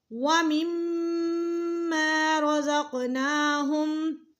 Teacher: میم مشدد ہے، یہاں پہ غنہ ہوگا